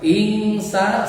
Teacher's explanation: nun mati menghadapi sin, huruf ikhfa dibaca ikhfa, n dibaca jadi eng. Ing samar dibaca jadi ingsa, sanya matudi.